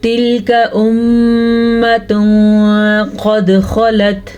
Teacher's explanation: तिल्का काफ को खींच के नहीं पढ़ना, थोड़ा सा भी लंबा नहीं करना। अगर थोड़ा सा भी लंबा किया तो लफ्ज़ गलत हो जाएगा।